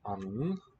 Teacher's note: Anden, with a nice long N sound. We don't hear a D.